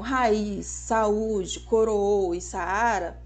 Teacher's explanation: O que acontece no encontro de duas vogais elas se separam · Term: hiato